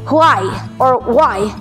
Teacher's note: You could say why with silent H or why na dinig yung H.